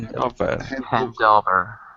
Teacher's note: The D goes to the second word.